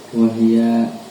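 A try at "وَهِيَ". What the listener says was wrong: Kamu baca ya salah ya.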